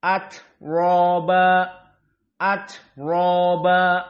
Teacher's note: dalam keadaan fathah maka dia dalam keadaan dibaca tafkhim atoba atoba maka ro dalam keadaan tafkhim